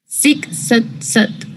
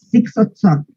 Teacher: No es O redondita como la nuestra, es más abajo.